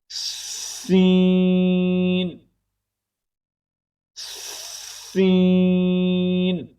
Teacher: اب سین کا مخرج ذرا سمجھیے گا۔ زبان کی نوک کو سامنے والے نیچے کے 2 دانتوں کے کناروں سے مضبوطی سے لگا کر بریک اور سیٹی جیسی آواز میں دانتوں کو سختی سے بند کیے بغیر پڑھیں گے۔ ٹھیک ہے، یہ ہے سین کا مخرج۔